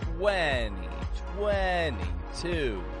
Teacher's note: note how I push out the W sound in the beginning